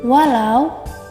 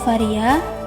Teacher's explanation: fonem W dan V ini masuk ke dalam bunyi bilabial, yakni pertemuan antara bibir bawah dan bibir atas